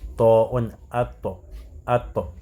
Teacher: il y a le contact entre cette extrémité de la langue avec le palais, yani le palais à la fin, ou bien la racine des incisives.